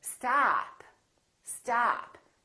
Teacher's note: your tongue touch your bottom teeth like this ah ah and this vowel is usually longer than most people who are non-native speakers tend to make it